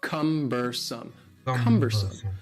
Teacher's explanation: the word cumbersome has three syllables and the stress is on the first syllable cumbersome cumbersome and something that is cumbersome is something that is